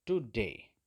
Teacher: तो टू पर कोई स्ट्रेस नहीं है मगर डे पर स्ट्रेस है